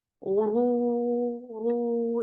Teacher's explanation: ru is heavy and two counts long